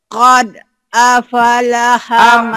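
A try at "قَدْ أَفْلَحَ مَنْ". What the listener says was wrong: Jangan apalah. Aflaha. F-nya mati. Qad aflaha man.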